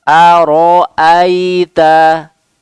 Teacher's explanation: Tipis, tebal, tipis lagi. A tipis, ro-nya tebal karena dia harokat fathah. Kemudian hamzahnya juga selanjutnya tipis lagi. Aro aita. Ya, jangan kebalikan menjadi tebal semua.